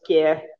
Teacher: in modern Tibetan, it's pronounced as ke, and you don't pronounce these initial consonants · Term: consonant clusters